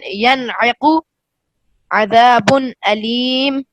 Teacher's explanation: نون ساکن کو اپنے مخرج سے بغیر غنہ زمانی کے ظاہر کرنا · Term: اظہار حلقی